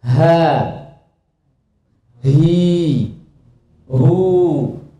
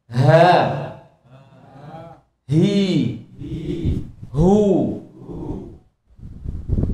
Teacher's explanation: Kalau huruf H dengan membukanya lebar pada dua pita suara tersebut, H itu terbuka lebar. Sehingga pengucapan huruf H, perhatikan pengucapan huruf H itu plong.